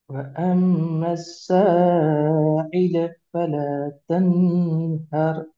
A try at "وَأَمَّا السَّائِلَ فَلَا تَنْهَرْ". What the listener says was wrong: இந்த ஐ வரக்கூடாது. இந்த இடத்துல நார்மலா இ சவுண்ட் வரணும். அது மட்டும் தான் மத்தெல்லாம் சரி. ஈல இ சவுண்ட் வரணும்.